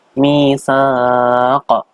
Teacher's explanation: Qaf di situ adalah bacaan qalqalah kubro. Dipantulkan tebal.